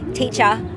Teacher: So in Australian English, you pretty much never pronounce the R at the end